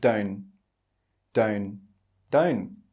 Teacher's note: the speaker doesn't say the t sound in the word don't. He just says don't, don't, don't.